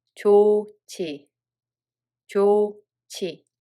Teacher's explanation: So hieut batchim makes [ㅈ] sound aspirated, [ㅊ] sound and itself will disappear.